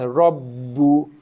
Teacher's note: Sabdu pada ba pun tak dengung, tekan dan lepas rabbu.